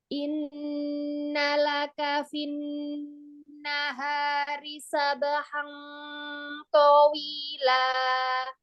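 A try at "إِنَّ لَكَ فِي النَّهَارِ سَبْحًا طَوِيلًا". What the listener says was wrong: To, jangan memajukan mulut. To, lempar suaranya ke atas. Towila, to, dibuka aja biar dia untuk fathah. To-nya jangan dimonyongkan ya. Buka aja karena untuk fathah. Dia kan bukan huruf alisan, bukan huruf asyafatan, bukan huruf bibir, huruf lidah kan. Nah, jadi jangan memonyongkan.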